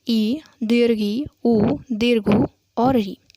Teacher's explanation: जब जीभ का अग्रभाग तालु के अग्रभाग से स्पर्श करता है तो आगे की तरफ मुंह बंद हो जाता है और इस स्थिति में उच्चारित होने वाले स्वर समृद्ध स्वर कहलाते हैं।